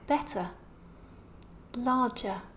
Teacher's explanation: you will never hear the r pronounced in words like better larger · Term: silent R